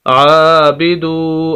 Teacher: आइन को लंबा करेंगे क्योंकि उस पर खड़ी ज़बर है